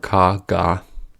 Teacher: The back of the tongue blocks the air for ka, ga.